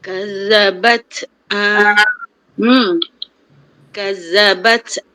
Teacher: bila kita sebut urut tersebut selepas tu dia ada terlepas udara ataupun nafas sikit je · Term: sifat alhams